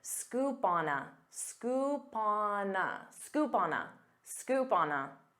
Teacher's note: instead of saying scoop on a with pauses you can pronounce this as one word